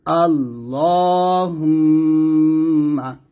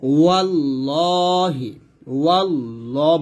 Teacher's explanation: আল্লাহ শব্দের মধ্য লামের ডানে জবর কিংবা পেশ হইলে উক্ত লামকে পুর করে পড়তে হয়, মানে এই লামটাকে মোটা করে পড়তে হবে। যেমন এখানে দেখুন, আল্লাহ শব্দের লামের ডানে এই যে জবর, তো জবর থাকার কারণে আমি এখানে মোটা করব।